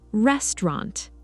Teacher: The middle part becomes shorter and softer.